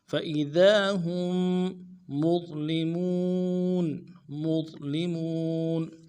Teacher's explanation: مظ میں ضا کو موٹا کرنا ہے، ضاد نہیں پڑھنا ہے، زا بھی نہیں پڑھنا ہے، ضا موٹا کریں گے. قا کے مخرج صحیح ہے، جب قا کو موٹا کرتے تھے اس طرح ضا کو بھی موٹا کرنا ہے اور لام کو نرمی سے پڑھنا ہے، لام کے زیر کو.